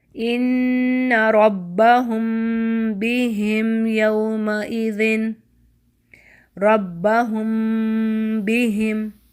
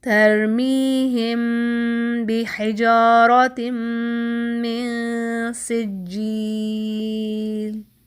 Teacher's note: تو یہ ہم کیا کر رہے ہیں، یعنی ہم میم کو غنہ کے ساتھ چھپاتے ہوئے با کے مخرج پر جا کر با کو بول رہے ہیں